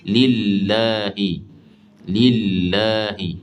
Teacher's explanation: Kemudian jangan menebalkan lam pada kata lillahi. Bila lam tu baris bawah ataupun sebelumnya berbaris bawah, jangan ditebalkan. Mesti baca nipis.